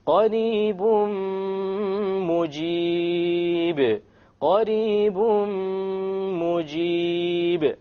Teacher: We drop the end sound and we merge the tanween immediately onto the meme with a ghunna.